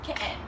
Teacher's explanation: T's are glottal T's, like in Cockney, meaning they're entirely skipped over.